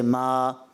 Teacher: جی ماشاءاللہ اچھی کوشش کی، مگر مقدار مد میں جیسے ہم بتاتے رہے ہیں کہ ایک الف، یعنی بس اتنا کھینچنا ہے کہ جس کو ہلکا سا کھینچتے ہیں 2 حرکات کی مقدار